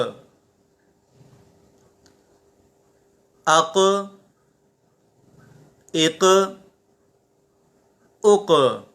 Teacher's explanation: حمزہ کاف زبر اک، حمزہ کاف زیر اک، حمزہ کاف پیش اک، اک اک اک، حمزہ قاف زبر اق، قاف حروف مستعلیہ میں سے بھی ہے اور حروف قلقلہ میں سے بھی ہے، تو ہم یہاں پر قلقلہ کے اندر قلقلہ خوب ظاہر کریں گے، آواز لوٹتی ہوئی معلوم ہوگی